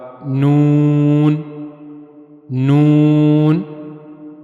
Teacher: اس کے لیے زبان کا نوک والا حصہ، یعنی زبان کی نوک اور اوپر کے اگلے دو دانتوں کے مسوڑے، زبان کی نوک جب اوپر کے اگلے دو دانتوں کے مسوڑوں کے ساتھ جا کر ملے گی تو وہاں سے نون ادا ہوگا